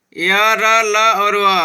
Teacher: अंतस्थ व्यंजनों का उच्चारण जीभ, तालु, दांत और ओठों के परस्पर सटाने से होता है, किंतु कहीं भी पूर्ण स्पर्श नहीं होता। अतः ये चारों अंतस्थ व्यंजन अर्ध स्वर कहलाते हैं।